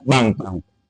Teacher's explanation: é bem provável que ele emudeça o R e diga banco